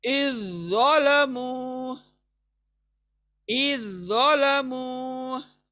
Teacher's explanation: Next इज और ज़ालमु आया, तो इज के जाल को हम छोड़ देंगे और ज़ो पढ़ेंगे, ज़ो पर शद है इसलिए ज़ो को पढ़ेंगे।